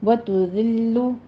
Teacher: وتعز من تشاء، آگے وتذل، اب دال ہے، دال کو نرمی کے ساتھ ادا کرنا ہے، یہاں پہ سیٹی کی آواز نہیں آنی چاہیے. لام کے اوپر تشدید ادا کرتے ہوئے ضمہ ہے، ہونٹ گول کر لیجئے